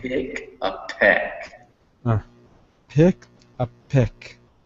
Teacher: make sure you puff, you bring a little puff of air with those P's